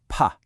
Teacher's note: No vibration, just a puff of air. That's a voiceless sound.